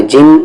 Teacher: نون پر تشدید ہے، غنہ ہوگا، غنہ یعنی کہ آواز کو ناک میں رکھیں گے ، نون پہ تشدید ہو یا میم